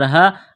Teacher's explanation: الف سے پہلے زبر ہے، حروف مدہ الف ہے، ایک الف کے برابر اس کو کھینچنا ہے۔